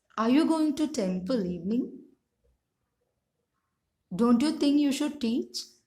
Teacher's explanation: we can see the pitch of the voice is falling and rising alternatively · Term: fall rise intonation